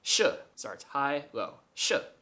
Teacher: And the tone goes high to low, and so you should say it like sh.